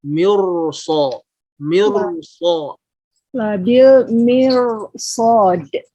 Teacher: pas ro-nya itu masih dalam kondisi bergetar suaranya, kemudian mengalir ke so. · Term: takrir